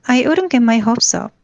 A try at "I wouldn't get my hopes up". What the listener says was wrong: wouldn't에서 이 W 발음 아직 좀 할 때 느낌이 어떠세요? 왜냐면 너무 힘이 들어가거든요. 이게 그냥 wouldn't라고 하면 되는데 그냥 wouldn't. 근데 wouldn't라고 계속 wouldn't.